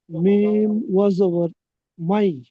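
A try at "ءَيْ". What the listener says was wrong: না, এটা আছে হামজা। হামজা ইয়া জবর আই। আই। ইয়া জবর ইয়াই।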